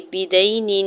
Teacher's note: یا ساکن سے پہلے دال کے اوپر زبر ہے، یا لین ہو رہا ہے، نرمی سے موڑتے ہوئے ادا کریں گے